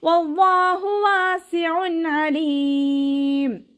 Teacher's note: വാവ് ഉച്ചരിക്കുമ്പോൾ ചുണ്ടുകളെ വട്ടത്തിൽ പിടിച്ചു കൊടുക്കുക. അവ്വാ എന്നുള്ള നാമത്തിൻ്റെ മുന്നേയുള്ള അക്ഷരത്തിന് ഫതഹ വന്നതുകൊണ്ട് അവ്വാ എന്നുള്ള നാമത്തിലെ ലാമിനെ ഉയർത്തിയിട്ട് ഉച്ചരിക്കുക.